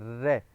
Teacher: रे का उच्चारण स्थान मूर्धा है, अब रे बोलेंगे तो रे बोलते हुए हमारी जीभ कंपन कर रही है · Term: प्रकंपित